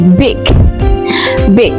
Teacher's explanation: Kalau I besar itu cara membacanya adalah lebih condong ke E.